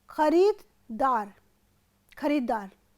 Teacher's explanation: यहाँ पर द का लोप हो रहा है